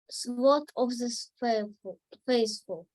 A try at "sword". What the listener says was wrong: Whoa, it's a tricky word, right? Sword. We don't pronounce W. So it's sword of the faithful.